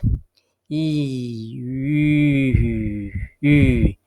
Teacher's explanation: you have this e sound and you we can try to pronounce this e sound e however with your lips round it